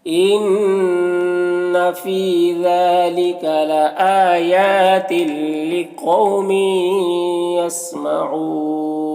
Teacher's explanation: یہاں پر تنوین کے بعد یا ہے حروف یومن میں سے تو تنوین کو یا سے ملا کر غنہ کے ساتھ میں پڑھیں گے، اس کو ادغام ناقص کہتے ہیں۔ اور یہاں پر وقف کی صورت میں مد عارض وقفی ہوگا